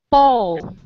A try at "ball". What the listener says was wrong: Yes, with your tongue. What you need to do is move your tongue and not your lips. It's a tongue movement and not a lip movement.